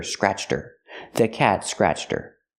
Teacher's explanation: her is not a stressed word so the H is silent